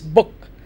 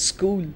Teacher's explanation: in one it is the short o it is book and in the other it it is the long o